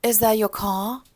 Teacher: Non-rhotic, она бросает все R.